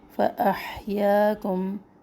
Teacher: ح وسط حلق سے نکلے